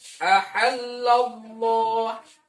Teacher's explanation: lafaz Allah harus dibaca tafkhim ya, harus dibaca tebal.